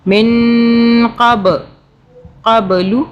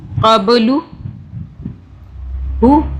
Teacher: اخفا کا مطلب چھپانا، 2 سے 3 سیکنڈ کے لیے ہم نے چھپایا۔ من قبلو، قا پہ قلقلہ کیا، جھٹکے سے پڑھا